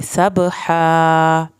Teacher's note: बा पे कलकला होगा